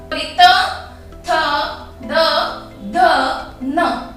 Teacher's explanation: ये हमारा जो त वर्ग की व्यंजन है वो हमारे दांतों को छूकर हमारे मुख से बाहर निकलते हैं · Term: दंत्य